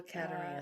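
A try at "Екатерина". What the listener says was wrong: this is Yekaterina. It's like YE Katerina. Yekaterina.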